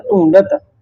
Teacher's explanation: ਜਦੋਂ ਦੋ ਢੱਡੇ ਇਕੱਠੇ ਹੋ ਜਾਣ ਨਾ ਗੱਭਿਆ ਢੱਡਾ ਜਿਹੜਾ ਹਲਕਾ ਬੋਲਿਆ ਜਾਂਦਾ ਡਡੇ ਵਾਂਗੂ ਬੋਲਿਆ ਜਾਂਦਾ